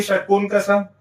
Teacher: षटकोण का स इसका उच्चारण स्थान होता है मूर्धा। और उच्चारण स्थान मूर्धा होने के कारण इसका वर्ग होगा मूर्धन्य।